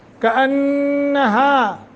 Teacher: نون مشدد ہے، غنہ کر کے پڑھیں گے